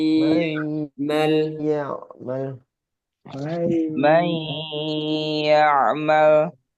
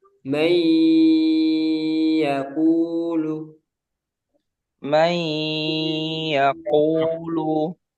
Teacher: Cara membacanya diidghamkan atau dimasukkan ke huruf berikutnya dengan tempo gunnah yang dipanjangkan. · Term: idgham bi gunnah